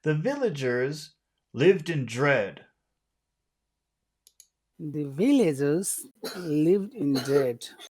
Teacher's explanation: We start high, then end low.